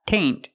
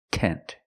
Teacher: have to use a singular form flower flower tent and remember it's not taint it's tent use the short e sound